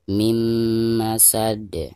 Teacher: Nah, ini juga sama, ada nun sukun lalu berhadapan dengan salah satu daripada huruf idgham mim ya. Jadi suara nun sukunnya itu harus langsung dimasukkan ke huruf mim yang ada di depannya.